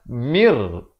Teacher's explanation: Nun mati ini terus kita masuk dengan ataupun mim baris bawah terus masuk ke dalam ra tanpa didengungkan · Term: idgham bila gunnah